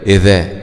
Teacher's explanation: مع مراعاة مخرج الذال طرف اللسان مع أطراف الثنايا العليا